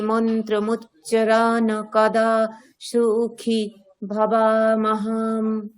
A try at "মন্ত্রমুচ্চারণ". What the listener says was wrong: আচ্ছা মন্ত্রমুচ্চারণ, হসন্ত আছে ম্যাডাম।